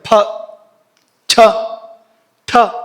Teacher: ಸ್ನಾಯುಗಳನ್ನ ಸಂಕೋಚ ಮಾಡದೆ ಹೇಳೋಕ ಆಗೋದಿಲ್ವ ಅಂತ ಉಸರಿಂದ ಬಲವಾಗಿ ವಾಗಿ ನೋಕಿ ಹೇಳಬೇಕು ಮಹಾಪ್ರಾಣ ಅಂತ ಯಾಕೆ ಕರೀತಾರೆ ಅಂದ್ರೆ ಉಸಿರನ್ನ ಬಲವಾಗಿ ನೋಕಬೇಕಾಗುತ್ತೆ ಮಾತ್ರ ಅಲ್ಲ ಇಲ್ಲಿ ಸ್ನಾಯುಗಳ ಸಂಕೋಚ ಏರ್ಪಡುತ್ತೆ ಮುಖ್ಯವಾಗಿ ನಾಭಿಯ ಪರಿಸರದಲ್ಲಿ ಸ್ನಾಯುಗಳ ಸಂಕೋಚ